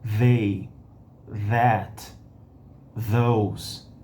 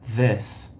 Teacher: engajamento das cordas vocais, a ponta da língua entre os dentes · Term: vozeada